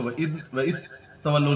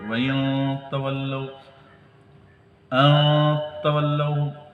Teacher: اخفا کرنے کے بعد تا پہ شد پڑھی جائے گی